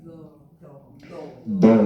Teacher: Kalau d itu ujungnya juga nempel ke langit-langit.